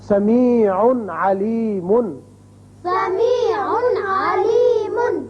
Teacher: تنوین جو نون اظہار ہوتا ہے یہاں تو اچھی طرح اظہار کریں گے ہم